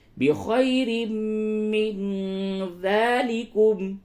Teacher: قل أنبئكم قل أنبئكم بخير من ذلكم، بخی، خا یا زبر، خی یا لین ہے، نرمی کے ساتھ بولیں